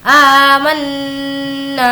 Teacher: मी नून पर यहाँ पर तजदीद है तो अब हमें गुन्ना करना है। मन, इस तरीके से इसे हम गुन्ना कहते हैं।